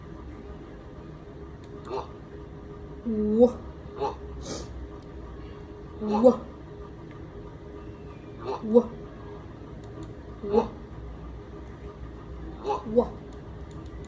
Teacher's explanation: even though the W is a consonant, it's pronounced like a vowel. So you should feel the air gliding over your tongue. And of course, the W is a voice sound.